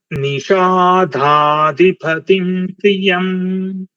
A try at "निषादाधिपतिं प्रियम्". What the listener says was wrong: Sir, once again you are switching Alpa Prana and Mahaprana. So this is this is dha. You are pronouncing this as dha. It's just Nishadadhipatim Priyam.